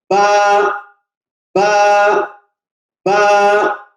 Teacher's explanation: the wet part of the both the lips, यानी होठों की तरीदार हिस्से, दोनों होठों को दबा के इस हर्फ को अदा किया जाता है